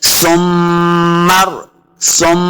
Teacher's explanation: सा को नरमी के साथ पढ़ेंगे, सा पे सीटी की आवाज नहीं आनी चाहिए, गलती हो जाएगी।